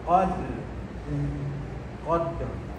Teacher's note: Jadi kita mati ra bunyi tu bergetaran dalam keadaan tafkhim tebal.